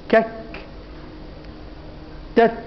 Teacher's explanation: حاطين الكاف والتاء آخر حروف الشدة ليه؟ عشان فيهم جريان نفس